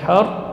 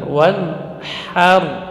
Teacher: jadi ha tidak boleh tebal, ya, tidak boleh tebal karena pengaruh ra.